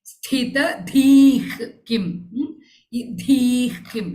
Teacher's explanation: dhi is followed by visargam, visargam is followed by ki ka, so ich sound should come there.